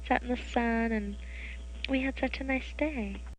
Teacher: the day which happens to be the last syllable is 430 milliseconds long which is three times longer than the first syllable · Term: final lengthening